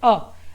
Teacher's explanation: कंठ मतलब कंठ यानी आपके गले से जो आवाज से बनता है जैसे अ, आप जब बोलेंगे अ, तो जो आवाज़ जहां से निकलेगी या जहां से शब्द का निर्माण होगा, उसे ही यानी वह शब्द का यानी नाम दे दिया गया है।